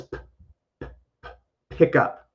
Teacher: I don't use my voice when I make that sound with p. It's just my lips and my teeth, and it's air. It just goes out like p, not p.